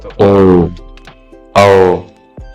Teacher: जब बोलिएगा तो कंठ से भी हवा निकल रहा है, ओठ का भी उपयोग हो रहा है, तो इसलिए इसको कंठोष्ठ वर्ण बोलेंगे। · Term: कंठ होस्ट